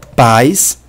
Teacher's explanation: tanto a quanto I são pronunciados na mesma sílaba ou seja forma um ditongo decrescente de uma composto de uma vogal a com uma semivogal i